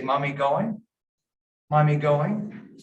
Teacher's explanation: so they'll put the tone up a little bit to make it a question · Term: intonation